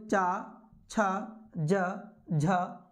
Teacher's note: ये चार व्यंजन वर्ण स्पर्श के साथ-साथ इनके उच्चारण करने में संघर्ष भी होता है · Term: स्पर्श संघर्ष